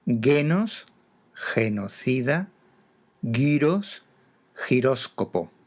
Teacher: Puede ser también un sonido fricativo ante E e I.